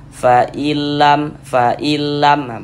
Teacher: Huruf nunnya masuk, melebur ke huruf lam ini, fa'ilam. Kemudian tidak didengungkan, tidak digunnahkan, sehingganya dibaca pendek saja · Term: idgham bila gunnah